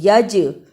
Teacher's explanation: جیم حرف قلقلہ ہے جزم کی صورت میں، اس لیے آواز پلٹ کر آئی